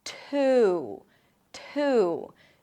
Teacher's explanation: The T, by the way, is aspirated, so it feels like there is a little H right after the T.